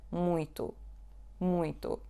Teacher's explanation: the word muito has nasal sound U, which is super strange because there is no N or M after the letter U. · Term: nasal U